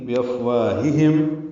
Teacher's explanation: بافواہہم، فا ساکن ہے، اس پہ ہمس ہے، وا الف مدہ ہے